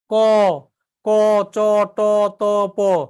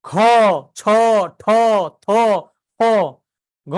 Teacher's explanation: অল্প প্রাণগুলো কি বাতাস কম আর মহাপ্রাণগুলা বাতাস বেশি